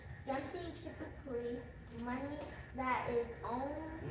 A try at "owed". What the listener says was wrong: No, it's not owned. What is that word? Owed or due. So debt is something, typically money that is owed or due.